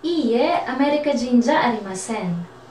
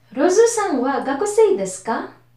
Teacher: Kung mapapansin nyo kapag nagtatanong ako, tumataas yung boses ko. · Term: rising intonation